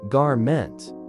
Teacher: with the emphasis on the first syllable, and ment rhyming with went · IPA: /ˈɡɑrmənt/